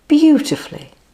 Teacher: put the stress on the first syllable